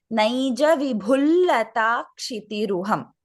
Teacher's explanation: Given that you are chanting Naija Vibhum and Lata Kshitiruham together, you can chant it as Naija Vibhul Lata Kshitiruham instead of pronouncing the Anuswara